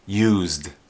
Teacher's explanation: When it's in the past tense or the past participle, this D is a voiced consonant sound, D, used. When you see this and it's a noun, then the S sounds like an S, use.